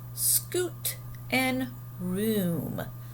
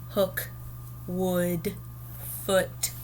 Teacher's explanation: it's kind of a ooh sound right so that's a little different than the uh sound we heard in hook and wood